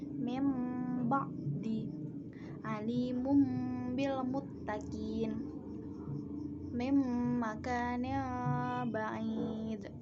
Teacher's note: Suara nun sukun atau tanwin menjadi mim serta berdengung. Di atas kalimat biasanya ada mim kecil. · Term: iklab